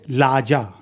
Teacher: So when we talk about the sound R and L, we find that in the Eastern dialect, there is no R sound. So for example, if you want to say Raja, it would be called Laja, not Raja, because there is no R in Eastern dialect.